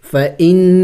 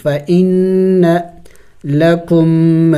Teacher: نون مشدد ہے غنہ کریں گے